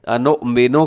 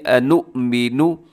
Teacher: اور اکثر لوگ کیا کرتے ہیں انؤمنو کر دیتے ہیں، جو کہ درست نہیں ہے، نون کے اوپر پیش ہے تو پیش میں ہونٹ گول ہونے چاہیے